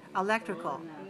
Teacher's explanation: 4 syllables. Stress the second.